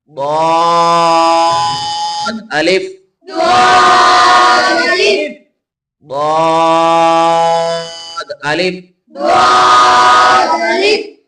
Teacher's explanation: ضاد کو بھی پر پڑھیں اور اسے لمبا کر کے پڑھیں. اس کے ساتھ آگے الف پڑھنا ہے.